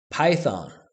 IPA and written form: ˈpaɪθɑn (Python)